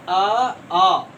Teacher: ये जब हम लोग बोलते हैं तो हमारा मुंह जो है खुला का खुला रहता है, कहीं पर भी कोई बंद होने की, कोई स्पर्श होने की आवाज नहीं है। सिर्फ स्पर्श होता है कहाँ, तो निकलने वाली जो प्राण वायु हो वो सिर्फ सीधा कंठ में जाकर के स्पर्श होती है।